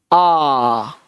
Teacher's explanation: Vocal sound से। कहां से निकलेगा? कंठ से, जीवा टच नहीं होना चाहिए।